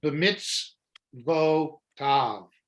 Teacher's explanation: the Shva is never an accented syllable. So you want to get off of it as quickly as you can, get over to the accent, which is at the end of the word